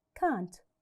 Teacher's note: So do not stress the T, it's light.